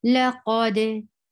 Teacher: For fatha, open your jaws. For dal, you are giving qalqala.